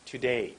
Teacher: Make the 2 short. Make the day much longer.